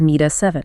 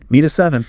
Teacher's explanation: the phrase meet at 7 becomes acoustically linked as mea 7. >> Me 7.